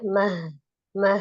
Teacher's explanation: Jadi H besar qiyamah dari tenggorokan bagian bawah.